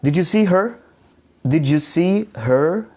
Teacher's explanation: your intonation rises at the end of the question that has an answer of yes no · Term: rising intonation